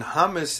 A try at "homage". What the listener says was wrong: Homage? Isn't the H silent? It does. Yeah, but it sounded...